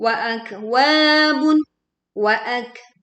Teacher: kaf sukun kita tekan dan kita menghasilkan desisan angin, juga suara mengalir, seharusnya tidak memantul. Wa akwabun wa panjangnya dua harakat.